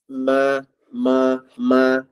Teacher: huruf mim ni keluar daripada dua anggota satu mulut yang kedua dia keluar daripada hidung rongga hidung rongga hidung ni ma ma ma eh dia ada sengau sengau